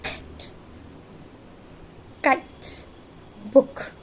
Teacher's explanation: K sound is voiceless velar plosive sound. Velar consonants pronounce करते समय position your back tongue against soft part of the roof of your mouth known as velum or soft palate.